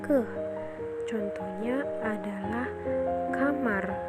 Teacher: fonem yang berasal kan dari belakang lidah dan menyentuh langit-langit lidah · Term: velg + shift